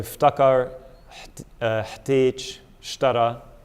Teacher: Basically, it's inserting a t sound after the first root consonant.